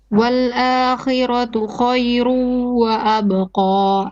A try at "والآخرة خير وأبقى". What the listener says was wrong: Make a bit more ghunna on your khayrun wa abqa. Idgham with ghunna 2 beats.